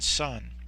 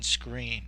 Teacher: in the second word sunscreen we actually have two vowel sounds the first vowel sound is the u sound the short u in Sun but the second vowel sound is the long e in screen